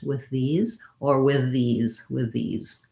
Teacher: you can glide and connect those two th's go from voiceless to voiced